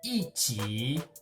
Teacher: Preceding a third tone, yi ji, together. Qi is third tone, so E becomes fourth tone.